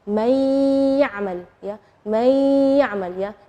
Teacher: Nunnya tidak jelas tapi ada suara dengung gunnahnya. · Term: idgham bi gunnah